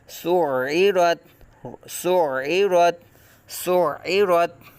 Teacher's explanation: زیر عی، سعی، تکلف کے ساتھ عین کی آواز نکالیں گے، جلدی سے اس کو حمزہ کی طرح نہیں پڑھیں گے بلکہ عین کی آواز یہاں تکلف کے ساتھ لازمی ادا کریں گے